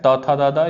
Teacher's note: त थ द द, ये दंत से उच्चारण होता है